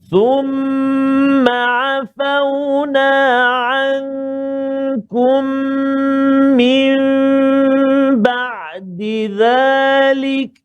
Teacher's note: Thumma afauna dua harakat saja kat situ, jangan panjang